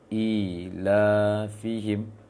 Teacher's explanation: Kemudian di ayat kedua, ilafihim, i dengan lanya. I yang awal ayat kedua panjang, kemudian lanya panjang.